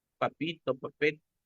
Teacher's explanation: el intercambio de vocales también no la i con la e